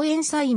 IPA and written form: ˈensən (Ensign)